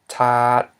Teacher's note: we have a high consonant, t, followed by a long vowel, a, ending in a dead syllable, t, which equals a low tone. So when we read this word, we know automatically that it's low tone because it follows this rule.